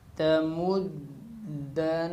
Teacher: نون کے اوپر غنہ شد کی وجہ سے ہو رہا ہے، کیونکہ نون کے اوپر شد باقی رہے گی اور حرکت ختم ہو جائے گی، جو اس کے اوپر حرکت ہوگی، زبر حرکت لگی ہوئی ہے اس کے اوپر، تو یہ زبر ختم ہو جائے گی، لیکن شد باقی رہنے کی وجہ سے نون پہ غنہ بھی باقی رہے گا۔